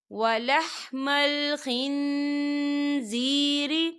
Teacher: دیکھیے خن یہاں پر نون ساکن ہے اور نون ساکن کے بعد ز آ رہا ہے، اور ز جو ہے اقفا کا ورڈ ہے تو یہاں پر اقفا ہوگا۔ ہم نون ساکن کی آواز کو ناک میں چھپائیں گے۔